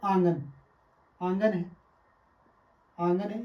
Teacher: आ के ऊपर चंद्र बिंदु लगने से ये क्या हो जाता है, अनुनासिक स्वर हो जाता है